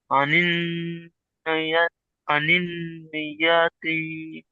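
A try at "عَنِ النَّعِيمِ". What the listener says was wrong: আনিন, নুন জবর না, আনিন না, আইন ইয়াজের ই, আনিন নাঈম।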